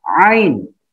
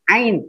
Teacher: Ada di rongga tenggorokan. Ain. Bukan di hidung.